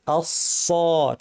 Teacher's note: সদ ভারী করার উপায় কি? জিহ্বার শীর্ষ নিচের পাটির দাঁতের গোড়ায় লাগিয়ে সদ উচ্চারণ হয়। ভারী করার জন্য জিহ্বার পেছন দিয়ে আওয়াজটাকে উপর ঠেলতে হয়। আস, ঠোঁট গোল না করে, ঠোঁট স্বাভাবিক থাকবে।